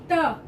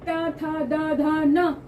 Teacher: दांत के पीछे वाले भाग को जीभ स्पर्श करती है, तब त निकलता है